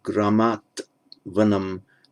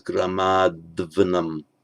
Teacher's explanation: It becomes voiced before a following voiced consonant. So Gramat Vanam becomes Gramad Vanam, so pronounced and so written.